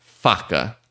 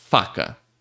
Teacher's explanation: A palavra curta, bem fácil, só pra gente entender como que a gente faz o som do F e por que que ele, né, nos remete ao som do TH algumas vezes. Repare que para fazer o som do F, você coloca o seu lábio inferior, encosta ele no seu dente de cima, esses dois dentes de cima da frente aqui.